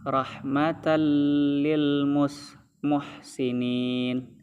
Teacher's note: Tanwin disambut oleh lam, hukumnya idgham bila gunnah, dan itu tuh melebur tan itu tuh melebur, bercampur dia kepada lam tasdid gitu.